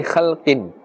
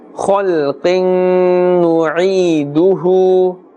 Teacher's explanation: Khalqin is incorrect. Khal, with a full mouth, a thicker tone.